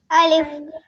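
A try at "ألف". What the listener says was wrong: हाँ, अलिफ को लंबा नहीं करेंगे, देखिए ऐसे अलिफ नहीं बोलेंगे, ऐसे बोलेंगे अलिफ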